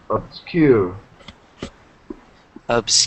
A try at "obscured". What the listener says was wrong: Obscured. Yeah, and then enunciate the D. D. So obscured.